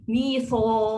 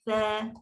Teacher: sa ni hurufnya nipis, istifal. So dia akan bunyi nipis juga.